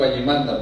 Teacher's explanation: Tenemos consonantes oclusivas sordas, como la consonante alveolar ta, por ejemplo, que se va a utilizar en palabras como allimanda, diríamos, en quechua amazónico allimanda, porque la regla, la característica del quechua amazónico es sonorizar las consonantes oclusivas, especialmente en esta serie de conectores, por ejemplo como allimanda, pero la escritura estandariza al uso de una oclusiva, diríamos, sorda, ¿no?